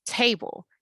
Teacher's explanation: your mouth opens up for that first syllable a it stretches out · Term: stress syllable